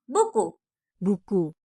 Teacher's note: bagian belakang lidah kamu nempel di langit-langit belakang terus udara kamu tahan dan lepas